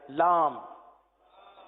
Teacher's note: لام کی میم جو ہے وہ ہونٹوں کے خشک حصے سے ادا ہوتی ہے، وہ حصہ جو باہر رہتا ہے.